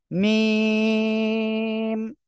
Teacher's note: দুই ঠোঁটের শুকনো জায়গা থেকে আমাদের এ অক্ষরটা উচ্চারণ হয়